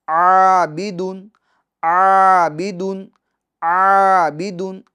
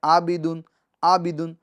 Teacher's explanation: کیونکہ الف سے پہلے جو حرف ہے وہ باریک حرف ہے، اور عین کو عین کی آواز کے ساتھ، یعنی عین کا جو مخرج ہے درمیان حلق سے ہا اور عین ادا ہوتے ہیں، تو اس کے مخرج کے مطابق ہمیں عین ادا کرنا ہے۔